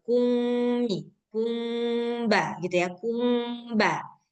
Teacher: Ikhfa syafawi itu maksudnya menyamarkan, nah menyamarkan bunyi mim sakinah ke dalam huruf ikhfa syafawi, yaitu huruf ba